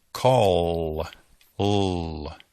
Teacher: El sonido de los L's dobles es l, call, l. El sonido de la terminación vibra en la garganta. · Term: voiced consonant